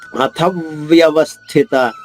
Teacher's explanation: థ పైన ఆఘాత ఉంది దాని తర్వాత వ్య సంయుక్త అక్షరము దానిలోని వ ద్విత్వం చేసుకుంటూ అంటే రెండు వాలు చేయాలి . అథవ్యవస్థిత మళళ వ పైన ఆఘాత ఉంది స్థిలోని మొదటి అక్షరం సాధితం · మళ్ళా వా పైన ఆఘాతం ఉంది, స్థిలోని మొదటి అక్షరం సా ద్విత్వం చేసుకుంటూ